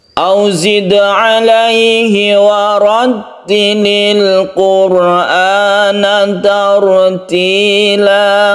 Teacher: Qalqalah sugro karena ada di tengah ayat. Qalqalah sugro dia itu memantul dalnya, kemudian warattilil ra-nya berfathah, maka dia dibaca tebal.